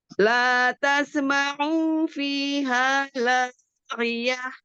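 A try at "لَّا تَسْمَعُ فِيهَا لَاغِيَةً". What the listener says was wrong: Au-nya enggak panjang. La tasma'u fiha laghiyah.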